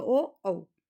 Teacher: कंठ ओष्ठ में हमारे कंठ भी शामिल होता है और हमारे ओठ भी